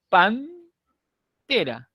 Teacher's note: todavía estoy en N, pan, la lengua ya tocó los dientes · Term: se ha dentalizado